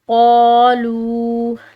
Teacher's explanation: قاف حروف جو یہ موٹے حروف میں سے ہے، ٹھیک ہے، اور اس کو ہم نے لمبا پڑھا الف مدہ کی وجہ سے